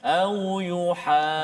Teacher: Dan ya, rupa-rupanya ada juga kita belajar pada hari ini dalam ayat yang ke-73, baris yang kelima daripada atas, sama kes dia, mak lazim kalimi mutsaqqal pada kalimah au yuhajjukum. Maksudnya selepas huruf ha tu jumpa dengan huruf jim yang bersabdu. Jadi kena ada sabdu dekat situ, kena tahan sikit kat situ. Jangan kita cepatkan.